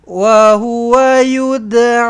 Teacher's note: Panjang a empat ataupun lima harakat. Mad jaiz munfasil